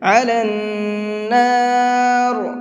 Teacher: نون کے اوپر تشدید ہے تو یہاں پر غنہ کریں گے